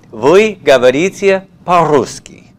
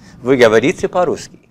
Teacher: Make sure that intonation goes down nice and strong.